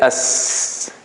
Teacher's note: when you say s you see the flow of air continues